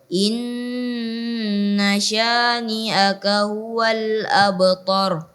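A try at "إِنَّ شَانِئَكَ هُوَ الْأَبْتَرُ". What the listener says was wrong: Ta-nya dijelaskan saja, ta tipis karena dia baru fathah, maka dijelaskan. Huwa juga tadi hanya masih kurang jelas. Ha dijelaskan lagi. Huwal, ha, hi, hu. Jadi dia bukan makhraj yang dari kaf. Bukan seperti itu cara membaca ha. Tapi dia makhraj tersendiri. Ya, dari makhraj tersendiri. Inna syani'aka huwal, bukan dari kafnya.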